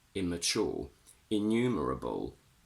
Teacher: We only say one M sound. Immature. Innumerable.